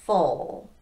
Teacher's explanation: there's no transition sound on this one from the vowel to the dark L because we're already doing that sound.